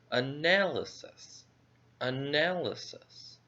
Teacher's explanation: The stress goes on the second syllable, nail. So this syllable will be a little bit higher in volume.